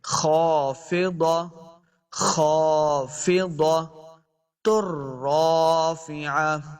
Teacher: خا حروف مستعلیہ سے اس کو موٹا پڑھنا ہے. آگے الف ہے، 2 حرکات لمبا بھی کریں گے.